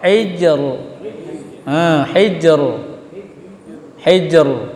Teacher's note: Kena jim tengah kemudian naik kepada makhraj ra. · karena memang jim qalqalah kemudian diikuti ra mati